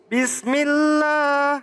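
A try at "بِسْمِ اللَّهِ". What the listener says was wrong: Bis. Nah, sinnya kudu berdesis ya, hames ya.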